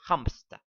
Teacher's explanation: in english many add a p to hamster · A voiceless stop with the same place of articulation as the nasal consonant is inserted.